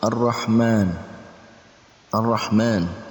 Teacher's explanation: alif lam bertemu dengan huruf Syamsiah roh ini adalah huruf Syamsiah maka Alif lamnya tidak terbaca tapi langsung dibaca tasydid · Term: alif lam syamsiah